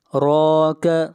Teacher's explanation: یہ 5 حروف جہاں بھی ساکن آئیں گے ان کے اوپر قلقلہ ہوگا، یعنی آواز کو ہلائیں گے۔ راک، را کو یہاں پر موٹا پڑھا جائے گا، را کے اوپر کھڑی زبر ہے، اور را کا قاعدہ یہ ہے کہ جہاں بھی را کے اوپر پیش یا زبر آئے گی را کو موٹا پڑھا جائے گا، اور جہاں پر زیر آئے گی را کو باریک پڑھا جائے گا۔